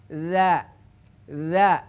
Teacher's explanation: makhraj dza adalah di ujung lidah menyentuh ke gigi seri atas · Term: zal yang bertitik